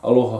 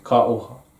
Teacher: the L turns into a R or a glottal stop